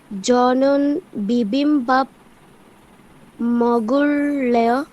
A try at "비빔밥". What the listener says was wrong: এখানে বলেছিলাম বিয়প প্রথমে থাকলে একটু হালকা হয়ে যাবে, একটু ভয়ের মতো উচ্চারণ হবে। ভিবিম্বাপ, ঠিক আছে? ভিবিম্বাপ, হ্যাঁ বিবিম্বাপ না, হবে ভিবিম্বাপ। একটু হালকা করে বলো।